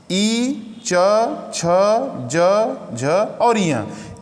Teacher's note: इन अक्षरों को जब आप बोलेंगे, महसूस करेंगे, बोलेंगे, तो आपके तालु पर दबाव पड़ेगा।